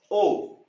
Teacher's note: आवाज कंठ से आ रही है लेकिन होठ भी साथ साथ काम कर रहे हैं, इसलिए यह है कंठोष्ठे। अंतिम हमारा जो स्वर है ओ, ये भी वही काम कर रहा है, गले के साथ साथ होठ भी इसमें गोल हो रहे हैं, ओ।